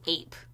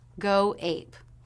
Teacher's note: both go and ape are stressed so the stress pattern is da da